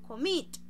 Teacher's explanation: la fuerza de la entonación la estoy haciendo en la segunda sílaba